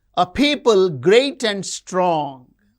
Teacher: People great and strong are stressed.